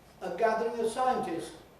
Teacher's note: they can’t manage to say the [sts] successively and they drop out the last sound [s] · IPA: ˈsaɪəntɪst